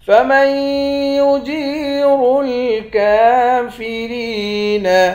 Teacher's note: میم کو یا کے ساتھ ملا کر یہاں پر بھی ادغام کریں گے